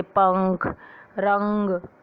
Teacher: इसका उच्चारण करते समय हवा नाक से बाहर निकलती है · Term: अनुस्वार